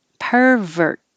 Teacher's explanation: you don't have to release the t hold it